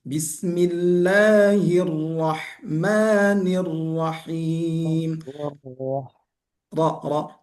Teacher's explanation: Tasdid untuk huruf ra itu betul-betul ditasdidkan, didabelkan